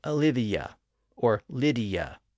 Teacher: but of course when we pronounce those names in normal speech we usually insert a slight Y sound or a y Glide in between